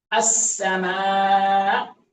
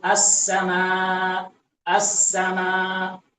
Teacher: بعض لوگ کیسے پڑھتے ہیں السماء السماء، یعنی حمزہ تحقیق سے ادا نہیں کرتے، ایسے لگتا ہے کہ حمزہ ہے نہیں، خالی الف مدہ پڑھتے ہیں